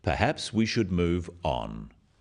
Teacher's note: The first one, "Perhaps we should move on," is phrased as a suggestion, but it is said in a firm way with a falling intonation at the end.